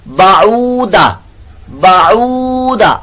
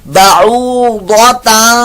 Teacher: ضاد کی جگہ دال کی آواز